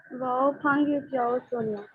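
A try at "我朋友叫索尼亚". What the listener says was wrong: Wonderful, excellent excellent.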